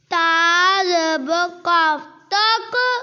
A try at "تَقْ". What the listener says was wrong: قاف موٹا نہیں پڑا اور قلقلہ بھی.